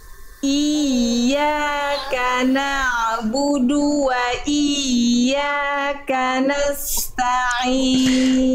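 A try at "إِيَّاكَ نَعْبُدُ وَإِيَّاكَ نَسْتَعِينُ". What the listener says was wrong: Ya, tinggal bukan hanya nada yang dinaikkan tapi iya, tengah lidahnya diangkat lagi iya. Jadi Bunda rasakan tengah lidah kita ketika melafalkan huruf itu naik ke atas. Nah, ini lebih ditekan lagi sedikit. Jadi ada penekanan yang lebih kuat.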